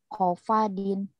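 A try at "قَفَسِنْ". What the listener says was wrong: Kopasin, bukan kofadin, enggak ada titiknya.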